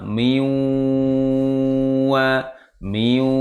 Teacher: lama dengungnya sampai dua Alif ya 1 setengah sampai dua Alif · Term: dengung yang lama